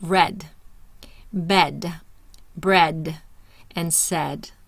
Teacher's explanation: So the first one is the short E sound. Tongue is mid-high, mid-front, mouth laxed